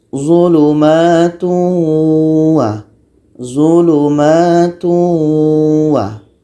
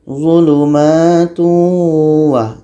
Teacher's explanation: Ini tanwin bertemu waw. Tanwin kita masukkan kepada bunyi waw. Jadi bunyi tanwin ini hilang. Menjadi zulumatu wa.